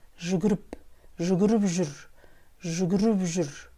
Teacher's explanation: Если первое слово в словосочетании оканчивается на «п», а следующее слово начинается на гласную или сонорную или звонкую букву, то буква «п» произносится как «б».